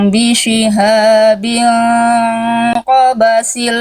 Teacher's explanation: Ikhfa hakiki hukum tajwidnya Bunda udah bagus bacanya tenang dibacanya samar dibaca dengung ditahan dua harakat